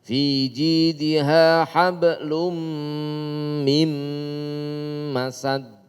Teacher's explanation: Mim hablum idgham bi gunah. Mim juga idgham bi gunah. Mim tasdidnya gunah. Jadi sama dengungnya.